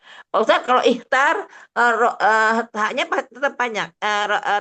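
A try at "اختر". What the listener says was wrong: Pendek. Taknya pendek. kalau Kalau di tasrif baru panjang. Tapi kalau untuk dhamir anta pendek. Ikhtar.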